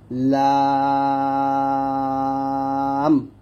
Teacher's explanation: জিহ্বার আগার এক কিনারা সামনের উপরে দাঁতের মারির সাথে লাগবে,